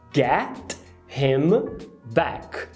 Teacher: no him, você vai apagar esse H, como é comum de acontecer